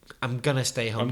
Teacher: when you say going to it's usually pronounced gonna